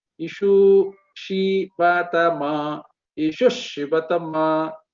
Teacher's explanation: It is joining. So the Visarga vanishes and it is replaced by the same letter which is following, but with half letter